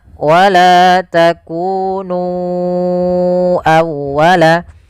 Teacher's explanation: Kemudian pada lafal nu awwalaka, ya di sini sama hukumnya dengan lafal bima anzaltu, yaitu adanya mad jaiz munfasil. Maka kita harus memanjangkan nu-nya sepanjang 4 atau 5 harakat.